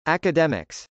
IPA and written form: ˌækədˈɛmɪks (academics)